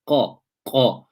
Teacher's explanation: The back of the tongue will be raised to al-hanaqul lahmi, the upper soft palate. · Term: qaf